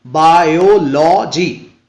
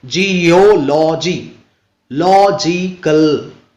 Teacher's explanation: तो ऐसे सफिक्सेस वाले जो वर्ड्स होंगे उनमें लास्ट से आप देखेंगे, लास्ट से जो थर्ड सिलेबल होगा उसी पर हम लोगों को स्ट्रेस डालना है